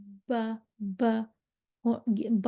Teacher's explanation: बा होंठों की तरी से निकलती है, यानी कि होंठों के जो गीला हिस्सा होता है ना, वहाँ से निकलती है और इसलिए इसको बहरी कहते हैं।